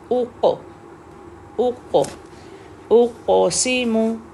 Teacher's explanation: क़ाफ heavy letter भी है और कलकला भी है